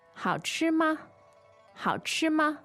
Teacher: It's a question particle, and it's a neutral tone here.